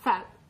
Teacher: Labiodental sound form with the upper teeth and lower lip.